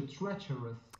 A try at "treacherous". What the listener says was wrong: Treacherous. Perfect.